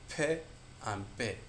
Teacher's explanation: The place of articulation bilabial, two lips come together.